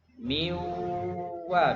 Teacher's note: nggak ada sisa nunnya, nggak ada sisa dengung. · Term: kamil